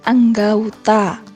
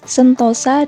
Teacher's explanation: Perubahan ini terjadi pada bunyi vokal tunggal O ke vokal rangkap AU, tetapi tetap dalam pengucapan satu bunyi puncak. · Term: Diftongisasi